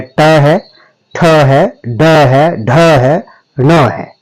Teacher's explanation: इसके पश्चात मूर्धन्य ध्वनि देखिए, जब आप तालु से थोड़ा सा दांतों की तरफ बढ़ेंगे तब मूर्धा आती है और जब जीभ का संपर्क मूर्धा के साथ होता है तब आपकी मूर्धन्य ध्वनियों का उच्चारण किया जाता है